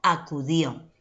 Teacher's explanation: donde encuentro la mayor fuerza de voz en la última sílaba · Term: sílaba tónica